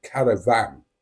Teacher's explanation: I pronounce the word caravan with the emphasis on the last syllable. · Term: the northern way